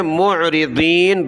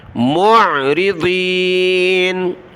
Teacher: ضاد کو موٹا کیا، عین کو گلے سے نکالا